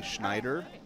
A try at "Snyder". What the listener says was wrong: It is. There's no H. Snyder.